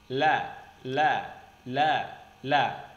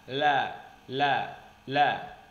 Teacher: huruf lam keluar dengan menggerakkan semua lidah bertemu dengan ujung langit-langit